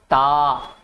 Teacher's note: जीभ की नोक ऊपरी दंत पंक्ति को स्पर्श करती है। बोल के देखो, ता है ना, ऊपर पहुंची और प्रयास करिए, तो इसे दंत्य कहा जाता है।